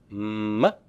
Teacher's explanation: You have to use both of your lips. It's a bilabial.